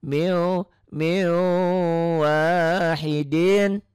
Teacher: w-nya tiga dan ada dengungnya ada ditahannya